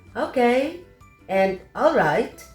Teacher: Before we close the conversation, we usually say, okay, and all right, with falling intonation.